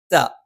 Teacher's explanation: ത നാവിൻ്റെ അറ്റം മേലെ മുൻപല്ലിൻ്റെ മുരട്ടിലാണ്.